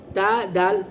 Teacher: زبان کی نوک اور ثنایا اولیہ کی جڑ، اس سے تا دال تو ادا ہوتا ہے. تینوں ایک ہی جگہ سے زبان کی نوک ہے اور ثنایا اولیہ کی جڑ ہے.